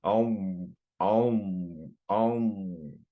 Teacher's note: the sound is sort of getting stuck between my tongue and my upper palate